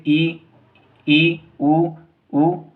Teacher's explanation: वह स्वर है जिनमें मुख बंद हुआ होता है वृत के समान ठीक है जैसे इ इ उ उ रे इसमें हमारा मुख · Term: संवृत